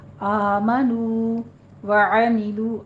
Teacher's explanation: آمنو دونوں جگہ 2 کاؤنٹ کرنا ہے، فتح قائمہ ہے اور نو پہ دونوں ہونٹ گول کیجیے، آگے کھینچنے آواز کو.